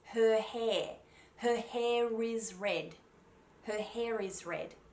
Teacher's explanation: i would put a connecting r at the beginning of the second word